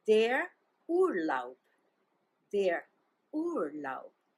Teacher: and the stress is on the first syllable